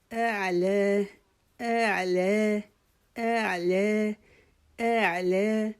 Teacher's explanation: جب ہم اعلی پڑھیں گے تو ہم نے جو حمزہ ہے اس کو نرمی سے شروع کرنا ہے. تو آگے آئین کی آواز کو لے کے نکالنا ہے.